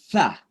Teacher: sa itu kira-kira ujung lidah kita digigit lalu didorong udara